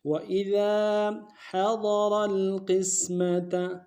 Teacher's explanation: حا کو اور ضاد کو دونوں کو موٹا ادا کریں گے، حا کو گہرائی سے ادا کریں گے. را کو موٹا ادا کر کے لام کے سامنے لانا ہے، لام ساکن گنہ نہیں ہوگا.